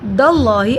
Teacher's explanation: اللہ کے نام کو موٹا پڑا، اللہ کے نام سے پہلے زبر ہے. اللہ کے نام پہ کھڑی زبر ایک الف کے برابر لمبا ہوگا.